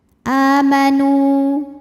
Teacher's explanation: Waw sukun didahului dhammah maka panjang 2 harokat. Amanu, namun panjangnya hanya saat berhenti saja. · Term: mad tabi'i